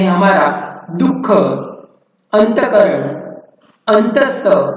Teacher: विसर्गयुक्त अक्षरों का उच्चारण झटके के साथ होता है